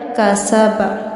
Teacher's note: اور کاف باریک پڑھا جائے گا